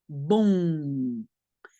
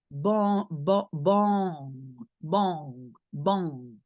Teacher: But the N after vowel, you don't hear it. It becomes something in your nose, bon. And if it's hard for you to do it, you start with the O sound and then you pinch your nose. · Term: nasal sounds